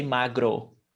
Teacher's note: We don't say magro, even though there are some accents that do, but most of Brazilian accents say magro with U at the end